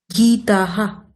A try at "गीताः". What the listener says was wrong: গীতাহা, very good, গীতাহা।